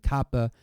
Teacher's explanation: it looks like our X it's not pronounced like our X it's really like a k the Kaa with a puff of air after it this is an aspirated sound